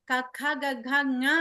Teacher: కంఠ్యాః అని ఆయన మన సూత్రంలో చెప్తారు అంటే కంఠం నుంచి పలికేవి కఖ గజ్ఞ అనేది కంఠ నుంచి పలికేది